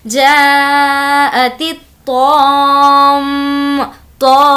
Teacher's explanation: میم پر تشدید ہونے کی وجہ سے تو کو کھینچتے ہوئے میم میں ملا لیں گے · جا کو کھینچیں گے کیونکہ اس پر مد ہے اور اس تا کو تو سے ملائیں گے